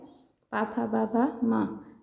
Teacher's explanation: पूरा प वर्ग ही ओष्ठ में आता है